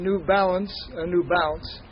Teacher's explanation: l between two vowels tends to disappear so that new balance and new bounce sound the same